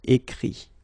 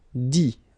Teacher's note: remember that phonetically this final T doesn't exist. Okay, so the sound will be only this I, écrit.